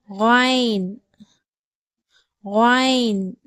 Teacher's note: எழுத்து கைன் வைனுடைய மஹரஜ் பிறப்பிடம் வந்து ஹா உடைய மஹரஜ் பிறப்பிடம் மாதிரியே தொண்டையினுடைய ஆரம்பப் பகுதியிலிருந்தே வைனுடைய உச்சரிப்பு வந்து வெளிப்படுகிறது